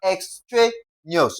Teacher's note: We're going to stress the syllable before the last.